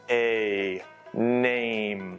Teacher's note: 注意▁name▁里面的双元音▁a▁要发的饱满